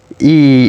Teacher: it's a long high front unrounded monothong